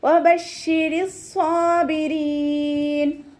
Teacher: നാവിൻ്റെ മുഴുവൻ ഭാഗങ്ങളും മുകളിലേക്ക് ഉയർത്തിയിട്ട് തഫ്വീം ചെയ്യണം